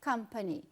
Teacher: company, uma palavra de 3 sílabas, e a primeira é a que você intensifica